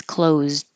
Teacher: you just hold the D